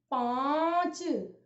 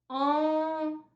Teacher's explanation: इसमें बच्चों ध्वनि जो आ की निकलती है, इसमें नाक और मुंह दोनों से एक साथ हवा निकलती है, आ। लेकिन इसे हम यहां से ले लें और कहें पंजा, पन, तो इसमें अन की ध्वनि निकली, तो न व्यंजन की ध्वनि निकली ना।